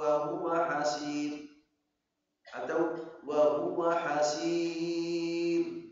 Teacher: Mad arid sukun. Nah, sukun arid bisa dua atau empat atau enam harakat.